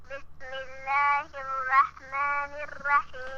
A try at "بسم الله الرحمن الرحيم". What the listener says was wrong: A stronger bat, because if the bat is not strong, it sounds like a meme. Bismillahi.